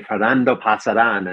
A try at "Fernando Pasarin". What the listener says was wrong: he always says Fernando Pasaran. Yeah, because in Spanish, the accent tells you which syllable to emphasize more. So since the accent there on the I is on the last syllable, that means you emphasize the in part.